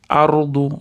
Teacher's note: Ardu ro tafhim, yo'g'onroq aytamiz.